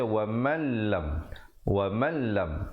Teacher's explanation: di situ idgham bila gunnah, nun mati bertemu lam.